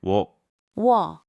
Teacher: 워 is u plus 어. Say them fast and you get 워. Like the 워 in wonder.